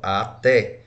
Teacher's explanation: Então, é acentuada na última sílaba. Não é um monossílabo, porque é separado, o A do T. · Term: oxítona